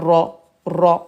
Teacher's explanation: on roule le R, le bout de la langue